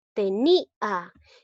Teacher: Pronunciando me doy cuenta que la vocal cerrada lleva mayor fuerza de voz. Por lo tanto, la I se tilda. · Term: hiato acentual